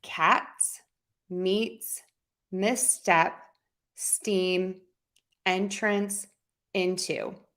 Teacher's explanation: we are going to use that t which is a little aspirated